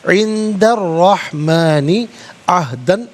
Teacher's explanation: را حرف شمسیہ ہے تو یہاں را کی آواز ہوگی، لام کی آواز نہیں ادا ہوگی